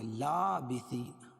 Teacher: لا کھڑا زبر قائم مقام الف مدہ کے ایک الف کے برابر کھینچ کے پڑھیں گے